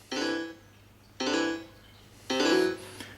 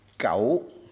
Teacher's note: the tone for this is a combination of fa, so, and la